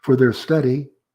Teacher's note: Rising intonation because it's unfinished